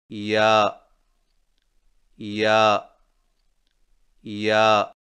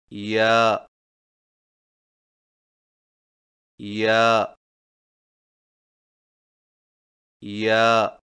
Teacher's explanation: یا کی ادائیگی میں زبان کے درمیان کو تالو کی طرف بلند کرتے ہوئے باریک آواز میں پڑھیں، یعنی یا یا یا۔